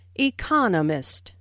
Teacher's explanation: economist this content word has new information so it is emphasized there are four syllables in economist with the stress on the second syllable